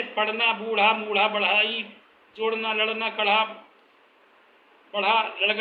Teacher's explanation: इन ध्वनियों को उच्चारण करने के लिए मूर्धा से रगड़कर ध्वनि उत्पन्न की जाती है, जबकि शुद्ध मूर्धन्य में जीभ को मूर्धा से केवल स्पर्श किया जाता है।